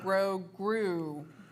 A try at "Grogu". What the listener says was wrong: Grogu? It's goo at the end, even though it's spelled Grogu.